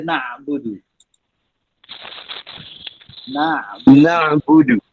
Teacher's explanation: Jangan pergi ke hidung tapi dia nah. Dia tidak sengau masuk hidung tu. Huruf ain ni dia duduk di halkum.